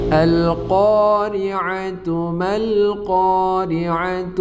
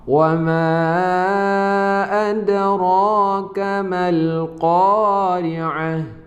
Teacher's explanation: Jika kita lanjutkan, itu dibaca sebagai ta. Jika kita berhenti sejenak, itu dibaca sebagai ha. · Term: ta marbutah